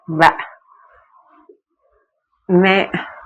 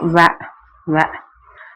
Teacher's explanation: பல்லிதழ் இயைய வகாரம் பிறக்கும்